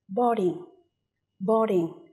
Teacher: Từ này có hai âm tiết và trọng âm sẽ rơi vào âm tiết đầu tiên.